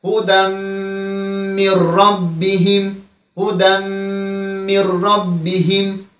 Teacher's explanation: Min rabbihimde ise nun harfinden sonra ra geldi. Burada ise nun harfi ra'ya birleşir. · Burada bilagunna var. Yani gunnesiz idgam edirik. Harfleri dahil edirik birbirine. Yani hudemmi rabbihim, hudemmi rabbihim şeklinde olur.